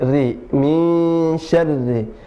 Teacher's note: Sya dibuka, sya, kemudian ri tipis ya, jadi lidah dan rahangnya diturunkan.